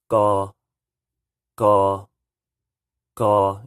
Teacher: It might kind of sound like I'm saying just a G, but I'm adding a little k on the beginning of it, but there's more G than there is K.